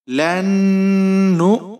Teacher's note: اب یہاں پر آپ نے واو نہیں پڑھنا، آپ نے یہاں پر حمزہ پڑھنا ہے، اور حمزہ کو آپ جھٹکے کے ساتھ پڑھیں گے۔